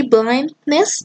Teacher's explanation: the nasal release and it occurs when the sound is next to a nasal sound